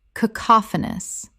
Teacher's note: 4 syllables with the stress on the second